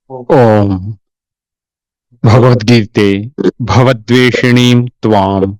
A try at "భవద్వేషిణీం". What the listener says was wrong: మళ్ళీ అదే భవద్ అంటున్నారు. భవత్ ద్వేషిణి అంటే నీ యొక్క నిన్ను చేసింది. భవద్వేషిణి అంటే భవ సంసారం యొక్క ద్వేషం. భవత్ అనేది ఎందుకు వస్తుంది? ఎందుకు పలుకుతున్నారు?